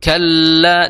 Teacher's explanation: dengan ee gusi depan ya bagian atas Kalla la Al Kalla di situ ada tasdid jadi ditahan ya jadi ditahan jangan terlalu terburu-buru jadi kala ya tapi Kalla di situ ada bainiahnya seperti itu